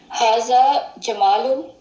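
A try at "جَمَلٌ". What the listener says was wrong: जमलुन, जमलुन। जमलुन, लंबा नहीं करेंगे, जमलुन।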